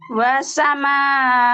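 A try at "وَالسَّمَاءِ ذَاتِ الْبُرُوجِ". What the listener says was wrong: Wasnya agak ditahan dulu Bu. Wassa tasdid.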